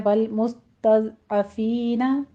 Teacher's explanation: सीन पर सीटी की आवाज़ लेकर आएँ और इस पर हमज़ पैदा होगा।